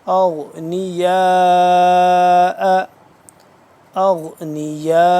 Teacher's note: مد ہے بڑی مد ہے، اس کو لمبا کریں گے 4 سے 5 الف کے برابر